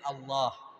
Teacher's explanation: hamzahnya dihilangkan lam ketemu lam di idgham kemudian dibaca tafkhim dibaca tebal